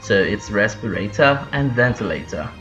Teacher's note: the Southern England accent and the received pronunciation is not rhotic, so you don't roll your R's